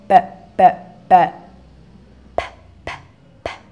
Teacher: your lips moves together and then there's a burst of air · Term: labials